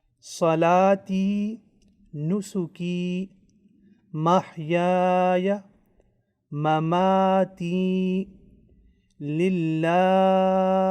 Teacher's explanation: mad al-asli, which means normal and natural elongation, and it will be prolonged only for 2 counts